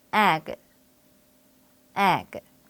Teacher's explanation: 바로 알파벳 A의 에 소리보다 입을 약간 작게 벌리고 에 하고 소리내야 해요. 이 입 모양처럼 입을 약간 작게 벌린 상태에서 소리내야 하는데 우리말 에보다는 입이 더 벌어지죠?